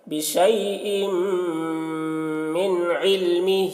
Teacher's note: حروف یرملون میں سے ہے. تو تنوین کو میم سے ملا کر غنہ کے ساتھ پڑھیں گے، اس کو ادغام ناقص کہتے ہیں